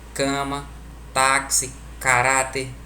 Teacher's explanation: Paroxítona, a tonicidade recai na penúltima sílaba.